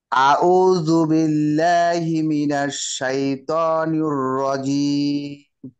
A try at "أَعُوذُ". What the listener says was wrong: দেখেন, আপনার আউযু হয়ে যাচ্ছে, প্রথমটা আ, পরেরটা হচ্ছে উ।